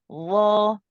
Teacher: ضا Well, and remember when you say the law, it's the very tip of the tongue which touches the tip. The tongue doesn't really stick out that much. It's the very edge of the tongue touching the upper two incisors.